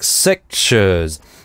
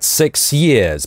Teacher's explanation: Six years он произносит как sick-shiz, это палатализация называться, когда /sj/ кластер превращается в /ʃ/